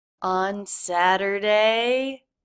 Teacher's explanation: she's drawing out the word her pitch goes up so that I know she's not done talking